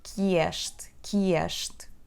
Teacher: Here we connect que este, so it becomes que este. We have that sound y that slides in